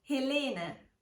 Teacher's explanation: stress the second syllable when pronouncing the name Helene